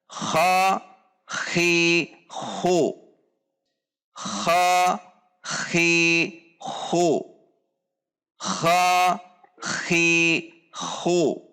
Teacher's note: Ada dorongan udara yang kuat saat berharokat. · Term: al-mahmus